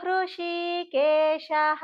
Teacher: అది రకారం కాదు అరుకారం కొంచెం తేల్చి చదవాలండి